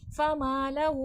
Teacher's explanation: माँ पे अलिफ मद्दा है, खींच के पढ़ा जाएगा।